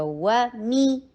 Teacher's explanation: واو کے لیے جبڑے کو کھولا جائے گا. میم کے نیچے کسرہ ہے. ای کی ساؤنڈ اور لوور جبڑے کو نیچے کی طرف کیا جائے گا